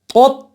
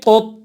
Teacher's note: تا پہ ہماری آواز جا کے بالکل رک جائے